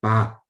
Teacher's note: Like in gong, pa, the voice is breathy. You have a lot of breath comes out when you speak it.